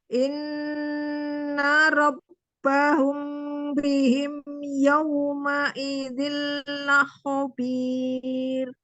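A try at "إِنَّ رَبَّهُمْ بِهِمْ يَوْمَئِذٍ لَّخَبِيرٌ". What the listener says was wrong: Ya, hampir ke bawah yang ditahan itu jadi kayak semuanya hampir mau ditahan. Jadinya sebutannya tuh kayak permainan temponya aja gitu kan berubah. Jadi kayak kurang stabil aja ya.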